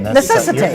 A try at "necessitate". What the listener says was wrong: You're missing a whole syllable.